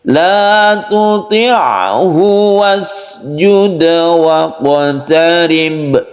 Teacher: La tuti'hu wasjud waqtarib, pendekkan. Waqtarib, roknya ditipiskan, sukun ba langsung qalqalah atau dipantulkan